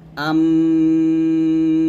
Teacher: মিমের গুন্নাটা হলো দুই ঠোঁট মিল করে আমরা মিমের গুন্নাটা আদায় করব